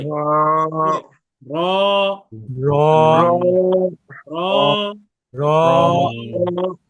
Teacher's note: হরফটা পর বা মোটা মুখ গোল করে পড়তে হবে তার মানে আমরা যদি রা বলি রা তাহলে ভুল হবে বলতে হবে মুখ গোল করে